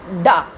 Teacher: तो जिह्वा जिस वर्ण के व्यंजन के उच्चारण में जिह्वा उठ करके गिरती है वो उच्छिप्त व्यंजन होते हैं। जैसे डा, जीभ उठी, उसने तालु को छुआ और उसके बाद नीचे तुरंत आ गई। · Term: उत्क्षिप्त व्यंजन